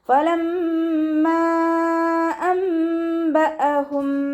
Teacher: നൂൻ സാക്കിനയെ മീമാക്കി മാറ്റിമറിച്ച് ഒന്ന കൊടുത്തിട്ട് ഓതിക്കൊടുക്കുക. ഒന്ന എന്ന് പറഞ്ഞാൽ മണിക്കുന്നതിനെയാണ് ഒന്ന എന്ന് പറയുന്നത്. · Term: ഇഖ്ലാബിൻ്റെ